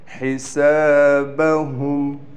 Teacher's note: ہا کو ہم یہاں بالکل صاف نکالیں گے گلے سے، سین کی سیٹی بھی نکالنے کے ساتھ سین کو کھینچیں گے بھی کیونکہ اس کے بعد الف آ گیا۔